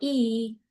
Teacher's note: the vowel e is not only high but it's made in the front of the mouth